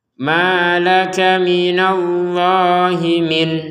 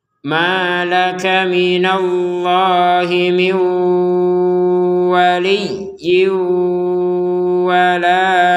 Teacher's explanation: Nun sukunnya ini karena ketemu waw dimasukkan kepada huruf waw sehingga dibacanya miu dan disertai dengungan. Nun sukunnya masukkan ke waw dan disertai dengungan.